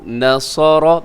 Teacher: یہاں نون باریک ہے، صاد موٹا، را موٹا۔